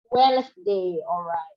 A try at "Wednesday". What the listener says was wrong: Only 2 syllables. Wednesday, Wednesday. That's how we pronounce the day, Wednesday.